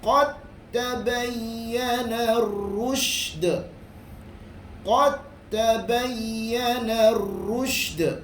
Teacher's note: dal bertemu dengan ta, dua-duanya tempat yang sama, makhraj tetapi berlainan sifat, masuk terus ke dalam ta. Tidak boleh tidak perlulah bunyi qad tabayyana, tak ada.